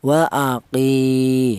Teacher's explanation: Untuk yang matobi'i berupa ya yang mati yang didahului huruf yang berharokat kasroh. Ini untuk matobi'i panjang dua ketukan